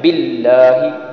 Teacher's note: باللہ میں ہا جو ہے یہ موٹی ہا ہے اور یہ گلے کے درمیان سے نکالیں گے